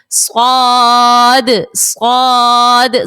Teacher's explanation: صاد بھی سیٹی والے حرف میں سے ہے، اس کو بھی ہم نے سیٹی کے ساتھ ادا کرنا ہے